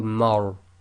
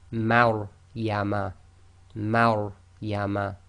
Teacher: the Ma is light and the Ra is tafkhim, full mouth. So you've got to switch from empty mouth to full mouth very quickly.